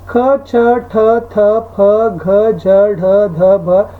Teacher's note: 2 ಮತ್ತು 4ನೇ ಅಕ್ಷರಗಳಿದಾವಲ್ಲ ವರ್ಗ ವ್ಯವಸ್ಥೆಯ, ಅವು ಮಹಾಪ್ರಾಣ ಆಗಿದ್ದಾವೆ